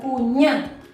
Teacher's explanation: cuñá, que lleva la carga de voz en la última vocal, la vocal tónica está al final